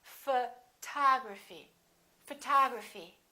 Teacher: we stress the second syllable we say photography this o also is reduced and also becomes